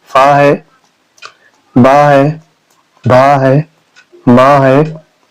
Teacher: इनका उच्चारण स्थान है ओष्ठ